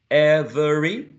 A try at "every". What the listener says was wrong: Every, perfect.